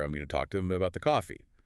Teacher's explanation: the a sound as in talk or coffee can become quite broad and pronounced · That broad heavily articulated a is very characteristic. · The short A sound, like in cat or man, often gets tensed and raised, sometimes sounding a bit like ayoo, but maybe more distinctively the ah sound, as in talk or coffee, can become quite broad and pronounced